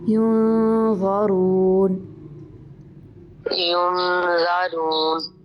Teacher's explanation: نون کے اوپر اخفا ہو رہا ہے، یہاں پہ آپ نے نون کی جو ساؤنڈ ہے ناک میں لے کر جانی ہے